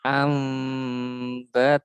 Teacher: Yang pertama hukum ikhfa syafawi, yaitu ketika ba sukun ya bertemu huruf mim. Nah, ini cara membacanya masuk ke mim dan didengungkan.